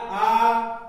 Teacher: हमने कहा आ, तो अगर आप थोड़ा सा ध्यान से अपने माइंड को कंसंट्रेट करके देखेंगे तो आ जो है हमारे जीभ के पिछले भाग से ऊंचाई थोड़ा, तो इसको कहेंगे पश्च स्वर